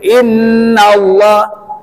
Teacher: Inna itu harus dibaca gunna karena Nun tahdid